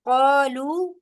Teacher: अलिफ मद्दा और वाव मद्दा दोनों को टू टू काउंट्स लंबा करेंगे